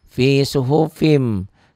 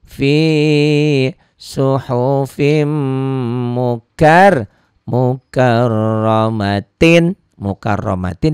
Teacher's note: Nah, karena mimnya bertasydid ini juga ada gunanya, ini idgham bi gunnah, ada dengung ke hidung yang ditahan, ada dengung ke hidung